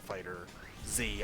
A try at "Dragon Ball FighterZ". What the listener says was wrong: Fighters. It is supposed to be pronounced Fighters, I think. The Z is just there.